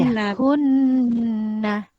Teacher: Wajibul guna dibaca dengung dan panjang 2 harakat.